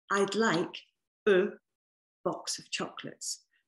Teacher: Well, first of all, this word, a, we never say a. We always say u. It's like you're relaxing all the muscles in the bottom of your jaw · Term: forget me word